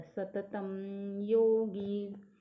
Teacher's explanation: त के ऊपर जो अनुनासिक है उसका अगला वर्ण य है, तो म उच्चारण रहेगा